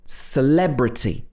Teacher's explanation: syllable we often use the schwa for this vowel sound so in this word celebrity we are stressing the le sound so this is an e sound but the first e is not stressed so it's again two different letter e's but pronounced in different